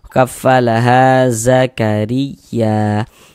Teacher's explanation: Sehingga ha dibaca panjang. Mad thobi'i panjang dua harakat.